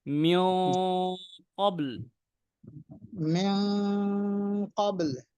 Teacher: কফটা মুস্তালিয়ার হরফ, সুতরাং আমার টানটা হবে মোটা